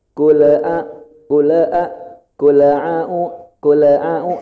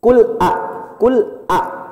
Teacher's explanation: hati-hati jangan ada pantulan e